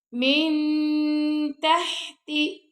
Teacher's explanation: تجری من، اب یہاں پہ نون ساکن بعد تا آ رہا ہے تو یہاں پہ بھی آپ نے اخفا کرنا ہے۔ من تحتی، ہا پہ ہم ہمس کر رہے ہیں